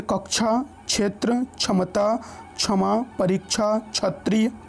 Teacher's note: इसमें हल्का क और स की मिली जुली ध्वनि रहती है